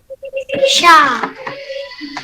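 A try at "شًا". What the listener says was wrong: Shan. Shan. Shan. Okey, awak ingat bila tanwin awak akan kena masukkan bunyi nun tu. Bunyi nun. Sebab itu tadi Sha dia jadi Shan. Awak dengar dia ada bunyi nun tu.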